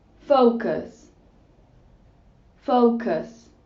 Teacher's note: we have the SCH vowel which replaces the U and is pronounced uh